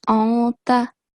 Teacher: You have to apply the rule of ikhfa, which means concealing the sound of Noon. So instead of anta, it will be anta.